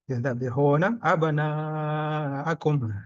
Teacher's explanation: Alif didahului fathah mad tabi'i 2 harokat, tapi bertemu dengan hamzah berubah menjadi 5 atau 6 harokat. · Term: mad wajib mutasil